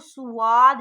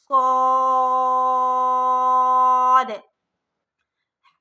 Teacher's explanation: سب سے پہلے ہم اسے موٹا پڑھیں گے، دوسرا سیٹی کی آواز میں پڑھیں گے، تیسری کہ یہاں پر بڑی مد ہے، اس کو 4 سے 5 علی کے برابر کھینچیں گے، صاد۔